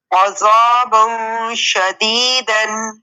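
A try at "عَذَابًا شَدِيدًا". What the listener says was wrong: نہیں عذا نہیں ہے، عذا ہرگز نہیں ہے. عین بھی باریک ہے. ذا اس کو آپ نے ذا کہنا ہے، ذا کر کے یعنی ہونٹ گول کر کے نہیں ادا کرنا.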